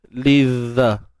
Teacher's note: Baik, seterusnya lizza. Huruf lam baris bawah, terus masuk pada zal, dan jangan lupa keluarkan sedikit ujung lidah kita.